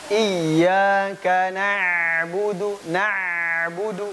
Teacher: pengucapan ain itu suaranya nggak boleh terhenti, bukan nggak. Dia terjepit antara tertahan dan mengalir.